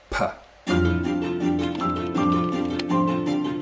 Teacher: If we want to make a speech sound like a P, like a P, right? We're going to close the lips here. The air is coming up through the vocal tract, and it gets stopped, and then air pressure builds up until it explodes out in a puh. And you can feel that if you try it yourself.